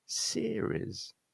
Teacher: the stress in this case is on the first syllable